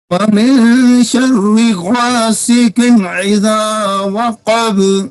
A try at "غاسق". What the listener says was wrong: حاجی صاحب آپ کے قاف جو ہے نا، قاف کے نیچے چونکہ زیر آ گئی ہیں، 2 زیریں آ گئی ہیں، تو 2 زیریں آنے کی وجہ سے نا قاف آپ سے پر نہیں ہوا، یہ چھوٹا قاف بن گیا ہے.